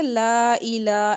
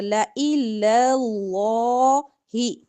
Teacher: لفظ اللہ کا لام موٹا پڑھنا ہے. لَإِلَى کا لام باریک ہوگا.